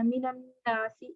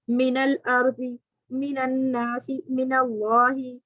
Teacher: سے ہو میم اور دوسرے ساکن پر سکون اصلی ہو تو پہلے ساکن کو زبر دے کر اگلے سے ملا کر پڑھ دیں گے